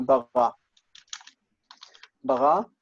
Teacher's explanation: Takes a long vowel in the second syllable, whereas the normal strong verb will take uh the patah, short.